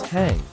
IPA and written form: hæŋ (hang)